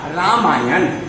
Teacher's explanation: ये अ और ये अ दोनों मिलकर आ हो जाता है, निर्माण होगा रामायण। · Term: दीर्घ संधि